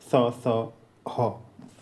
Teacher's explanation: ऊष्म व्यंजन। इनका उच्चारण रगड़ या घर्षण से उत्पन्न गर्म वायु से होता है। इसलिए इन्हें ऊष्म व्यंजन कहते हैं।